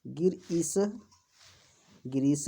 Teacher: गिर में ह्रस्व इकार और ईश में दीर्घ इकार। तो ह्रस्व इकार और दीर्घ इकार मिल करके दीर्घ इकार ही होंगे।